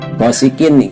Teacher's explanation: kin itu harus baca harus jelas karena tanwin menghadapi hamzah termasuk idhar